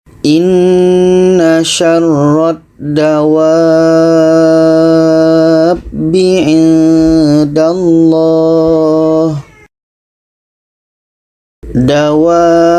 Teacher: Jadi kita panjangkan dulu 6 harakat, baru kita sambut dengan huruf yang bertasydid. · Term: mad lazim kilmi mutsaqqal